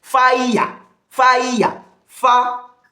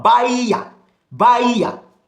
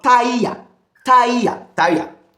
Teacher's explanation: Gliding from one vowel sound to the second one. So it involves 3 vowel sound, but yet it's still seen as one syllable.